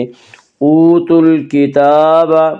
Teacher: اوتوا الکتاب، تا کے اوپر کھڑا زبر ہے، کھڑا زبر کو ایک الف کے برابر کھینچ کر پڑھیں گے